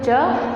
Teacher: च वर्ण का जब उच्चारण करते हैं तो च हमारी तालु से स्पर्श करके निकलती है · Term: तालव्य